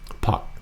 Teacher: Kind of like a hockey puck. Puck, but low tone.